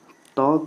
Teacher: त का उच्चारण स्थान है दंत